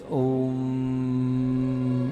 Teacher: अब ये तीसरी स्टेप हमारी, ये ओंकार की 30-70 के रेशो से। ओ को 30% कंठ से उच्चारण करेंगे और म को 70% नाक से उच्चारण